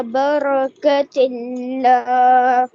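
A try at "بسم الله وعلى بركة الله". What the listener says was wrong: برکت اللہ. آپ کی راہ صحیح کلیئر نہیں ہو رہی کیونکہ آپ چل پھر رہے ہیں.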